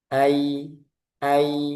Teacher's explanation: ketika sukun ketika sebelumnya fathah maka dia ada sifat lin. Lin itu artinya lembut, lemah. Ai ai jangan ditekan.